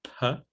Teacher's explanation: The voiceless bilabial plosive is P.